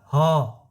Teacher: ह कहाँ से आवाज निकलता है, अब कंठ से निकल रहा है ना